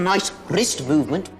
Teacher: the distinctive rolling r that is common to the scottish accent